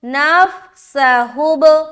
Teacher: با میں ہم قلقلہ کر رہے کیونکہ با کے اوپر سکون، اور با حروف قلقلہ میں سے ایک ہے۔